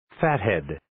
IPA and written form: 'fæt,hed (Fathead)